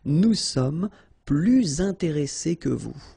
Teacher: you make this little link, little liaison between the two, so you hear a little bit this S